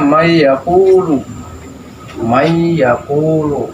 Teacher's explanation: Asalnya man dengan yaqulu, karena nun ini, nun mati ini menghadapi ya, dibacanya may yaqulu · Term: idgham bi guna